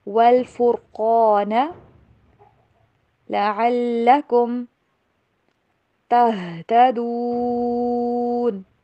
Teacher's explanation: قاف کو موٹا پڑھیں گے اور را کو بھی